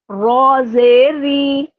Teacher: اب ری بولتے ہوئے میں نے را کو باریک کر دیا